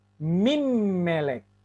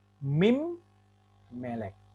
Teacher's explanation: Karena di sini ada dages forte katanya. Jadi ini mimnya ini double.